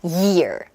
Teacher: 소리가 약간 둔탁한 느낌, 마찰음의 음이 있죠? 그래서 내가 Y 사운드를 했는지 안 했는지를 본인이 판단을 하실 때는 혀 끝으로 눌렀나 안 눌렀나로 생각하시면 돼요.